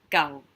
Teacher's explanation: different tones means completely different things is that go so go just a middle tone there's no rising no falling